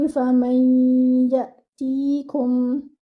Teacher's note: You will merge the noon sakina into the ya. Okay, and you will also have to stretch the gunna. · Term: idgham